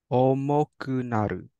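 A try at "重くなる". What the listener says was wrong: Perfect. Omokunaru. Nice.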